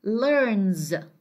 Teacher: for the third person singular S here, is pronounced as Z as well. We say learns.